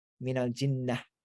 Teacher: And but if you end on it, you drop the last vowel, and you can, that T like changes into a H sound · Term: ta marbuta